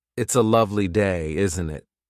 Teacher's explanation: Notice the upward tone at the end of, isn't it? That's classic intonation.